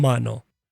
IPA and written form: ˈmɑnoʊ (Maono)